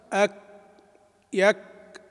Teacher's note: إظهار شدتها وهمسها، والشدة تكون في بداية النطق بالكاف ثم بعد ذلك الهمس، والهمس يكون معتدلاً